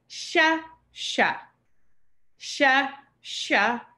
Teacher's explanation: the tongue behind the teeth this is retroflex sha